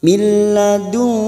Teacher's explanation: nun sukun bertemu kaf, ikhfa hakiki. Dan ini juga yang disebut dengan ikhfa ab'ad. Kita samarkan bunyi nun sukun 3 harokat.